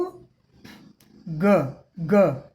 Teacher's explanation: एकदम स्पष्ट गूंज सुनाई पड़ रही है